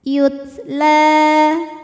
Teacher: Taknya jangan lupa keluarkan anginnya ya hamas. Yutla. La matobi'i muqaddar karena ada huruf lam berbaris fathah panjang, maka huruf lam panjang 2 harokat.